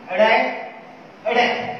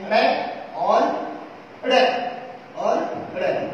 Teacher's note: जैसे मैं बात करूं अड़ै, अड़ै, देखो पहले हम जिह्वा को उलट लेते हैं, जिह्वा हमारी उलट जाती है, पीछे की ओर उलट जाती है, फिर झटके के साथ नीचे भगा रहे हैं जिह्वा को, फिर तब इसका उच्चारण हो रहा है अड़ै। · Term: क्षिप्त व्यंजन